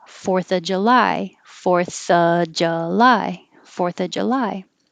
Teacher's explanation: more commonly the of is going to change to uh